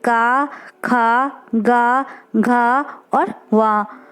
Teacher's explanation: का वर्ग में जितने भी आते हैं वो सब कंठ से बोले जाते हैं।